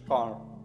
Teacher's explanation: British people often do not pronounce the r at the end of the words. For example, American car car strong sound.